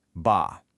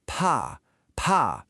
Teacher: Now for P, really push the air out. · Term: aspiration